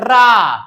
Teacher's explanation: लुंठित रगड़ कर चलती है। लुंठित हवा जीभ से रगड़ कर चलती है और जीभ का अगला भाग मुड़ जाता है। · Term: प्रकंपित व्यंजन